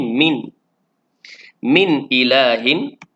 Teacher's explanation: nun mati bertemu dengan hamzah izhar halqi, jelas pada nun yang mati